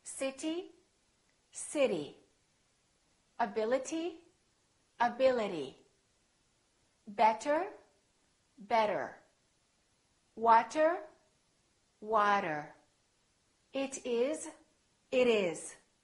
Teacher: All of those words that I said had a T in it, but the T didn't really sound like T. No, it didn't. It sounded more like a D sound.